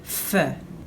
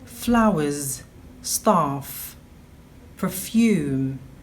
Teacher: This is a Fortis Labio-Dental Fricative.